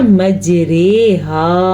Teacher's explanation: وہ را جو امالہ سے پڑھی جائے وہ باریک پڑھی جائے گی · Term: را امالہ